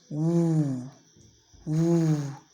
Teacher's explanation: It is high, back, and rounded.